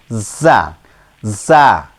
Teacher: এই যা অক্ষরটার উচ্চারণ আমরা যা জিহ্বার আগা সামনের উপরের আর নিচের দুই দুই চার দাঁতের আগার সাথে লাগিয়ে শীর্ষ উচ্চারণ করতে হবে যা।